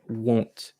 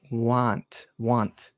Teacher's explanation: if you look at my mouth when i do oh my lips get closer right won't and so the sound more comes out like a